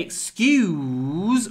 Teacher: the Z and the s in excuse It's the vowel because when we say excuse we have a full oo vowel with a lot of w before the Z